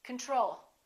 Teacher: we say control or do we say control we say control second syllable is stressed the first o is reduced